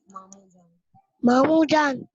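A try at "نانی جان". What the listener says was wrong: देखें बेटा, नून अलिफ ना, नून छोटी है नी, नानी जान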